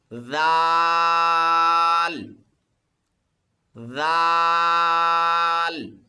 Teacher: دال دال، آگے حرف ہے جی ذال، ذال کو پڑھنے کا طریقہ یہ ہے، اسے زال نہیں پڑھنا، اور طریقہ سماعت فرما لیں، زبان کو اوپر والے دانتوں کے نیچے رکھ کے اسے ادا کرنا ہے۔ ذال، اس میں زا کی آواز بالکل نہیں آنی چاہیے